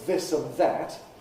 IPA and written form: ˈðɪs ən ˈðæt (this and that)